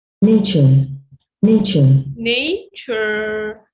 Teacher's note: The first part is stressed, and you are here, you are in. The second part is unstressed. It comes in weak form.